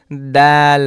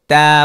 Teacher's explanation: জায়গাকে বলে যেমন ধরেন আমি যে দাল বললাম তা বললাম তাহলে আমার জিবার আগা এই উপরের দাঁতের গোড়ার দিকে লাগতেছে